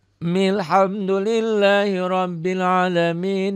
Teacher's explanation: hamzah A-nya nggak dibaca karena diwasol, hamzah wasol